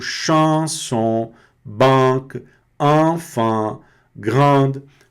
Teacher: uma pequena parcela do som, ela tá associada ao nariz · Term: som nasal